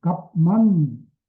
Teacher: 그러나 값만 그러면 비읍이 미음으로 변해서 소리 나는 겁니다